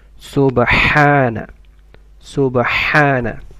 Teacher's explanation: ح should come from mid of the throat.